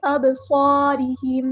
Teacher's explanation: صاد کو موٹا ادا کرنا ہے، ہیوی لیٹر ہے اور اس میں سیٹی بھی آئے گی